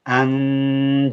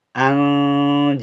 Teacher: you'll notice I'm holding the noon because jim falls into the ikhfa family. So I'm going to hold the noon.